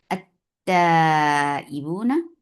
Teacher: اس سے پہلے آنے والے حمزۃ الوصل کو اگلے تا کے ساتھ ملا دیا کیونکہ یہ لام الشمسیہ ہے، یہ لام مدغم ہو گیا ہے